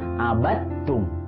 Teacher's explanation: Jadi dalnya tidak perlu dibaca langsung masuk ke huruf ta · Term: idgom mutajanisain